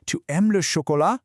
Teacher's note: You literally just take a normal sentence, don't change a single word, and just let your voice go up at the end, just like we do in English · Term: the uptalk